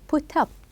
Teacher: The up is more stressed than the verb.